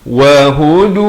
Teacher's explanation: Wahudu, wa dan hu, ha itu di pangkal kerongkong, makhrajnya jangan lambat, jangan panjang, dia satu harakat saja, sama seperti wa.